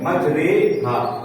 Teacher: را کے اوپر زبر تھا، تو را کو کیا کر دیا، زیر کی طرف مائل کر کے پڑھنے کی کوشش کی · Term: امالہ